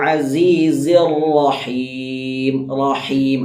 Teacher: റാഹ് തഫ്ഹീം ആണ് ഫത്തഹ് സംഭവിച്ചത് കൊണ്ട് തഫ്ഹീം ആക്കി തന്നെ ഉച്ചരിക്കണം കനപ്പിച്ച് ഉച്ചരിക്കണം